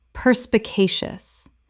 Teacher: Five syllables with the stress on the third.